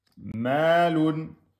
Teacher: Ici, on a le mim fatha avec la prolongation. Ma, deux temps, obligatoire.